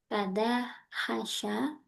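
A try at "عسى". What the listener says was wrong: Bukan hasya Ustaz. Asa ain ain.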